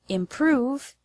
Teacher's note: The word improve has the stress on the second syllable